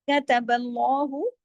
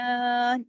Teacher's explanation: پھر کتب اللہ، اس کو کتا نہیں، الف نہیں لگانا، کتا، کاف زبر کا، تا زبر تا، کتب اللہ، اللہ کے نام میں لام کو ہیوی کرنا ہے کیونکہ اللہ کے نام سے پہلے زبر ہے